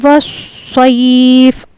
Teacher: اب یہاں پہ چلتے ہیں آگے، اس کو 4 الف کھینچا ہم نے، وس، یہاں پہ واو صاد زبر وس، یہاں پہ خیال رکھنا ہے صاد کا مخرج، وس نہیں کہنا، اس کو کہنا ہے وس، صاد کو پر کر کے پڑھنا ہے